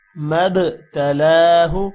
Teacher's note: میم با کے ساتھ مل رہا ہے با پر قلقلہ ہوگا